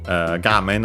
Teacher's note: Gamen on its own is accented on the first syllable, so be careful. It's one of, despite being a Chinese compound, it's one of those that are accented there instead of being unaccented.